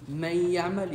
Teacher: You merge the noon with the next letter, but you don't disappear the noon. Because if you disappear the noon, instead of saying man ya'mal, you will say ma ya'mal. That's disappearance. · It doesn't disappear. You merge the noon with the next letter, but you don't disappear the noon. Because if you disappear the noon, instead of saying man ya'mal, you will say ma ya'mal. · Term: idgham naqis